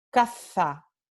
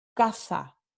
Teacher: Con el cefeo tenemos todo que se pronuncia con th, la interdental fricativa sorda